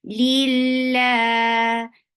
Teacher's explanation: Lillahi, keep kasra very light here and attach it lafz jalala. Lafz jalala will be light because you can find kasra before it.